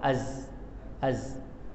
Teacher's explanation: Jaga makhraj zai, makhraj kena zai. Makhraj ujung lidah pada gigi kecil bawah, belakang gigi kecil bawah.